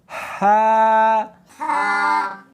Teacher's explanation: ہاں نہیں پڑھنی بلکہ اس کو حلق میں سے نکالنا ہے، سینے میں سے نہیں نکالنا